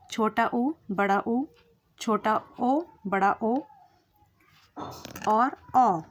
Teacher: इन वर्णों का उच्चारण जब भी आप करेंगे, तो होठ आपके ज़्यादा खुले हुए दिखेंगे, लगभग एक वृत्त के समान। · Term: वृतमुखी